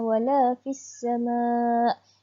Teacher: bacaannya tidak kedengaran huruf lam. Jadi kita memasukkan wala fis sama', memasukkan ke huruf yang ketiga iaitu huruf sin kerana terdapatnya tanda sabdu di situ. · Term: alif lam syamsiyah